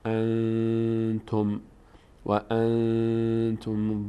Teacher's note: اون حروف حلقی نیست از حروف یرملونم نیست با هم نیست پس اخفا میشه ان یعنی صدا از بینی ادا میشه